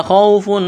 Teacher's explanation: واو لین ہے، اس کو جلدی پڑھیں گے، کھینچنا نہیں ہے